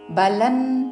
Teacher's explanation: ఇక్కడ అనుస్వారము తావర్గంలోని అనునాసిక ఉచ్చారణ